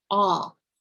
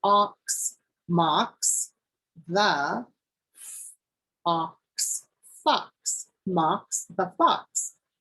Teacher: sometimes we use o with the short sound and it says the sound ah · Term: short o sound